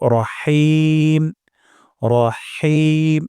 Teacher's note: আমরা এখানে হা উচ্চারণ করব গলার মাঝখান থেকে অধিকাংশ সময় দেখা যায় অনেকের এই হা টা উচ্চারণ হয় না · হা সময় বাতাস বের করে দিব এবং গলার মাঝখানে উচ্চারণ ব্যবহার করব।